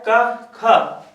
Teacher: क ख दोनों में कोई कंपन नहीं हुआ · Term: अघोष